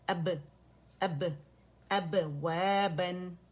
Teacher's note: دونوں ہونٹوں کے خشک سے آپس میں مل کے واپس آواز پلٹے گی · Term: با کا قلقلہ